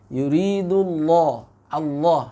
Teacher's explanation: Yuridullah jangan sampai masuk ke dalam hidung ya.